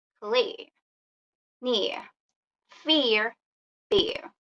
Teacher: Diphthong e. It is like a combination of the short vowel I and schwa sound.